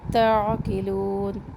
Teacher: عین رگڑ کھاتی آواز کے ساتھ اس کو ادا کریں